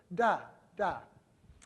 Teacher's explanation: But then you could also make a consonant where the larynx is activated, the tongue's right behind the teeth, and you make a sound like this, da, da. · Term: voiced dental consonants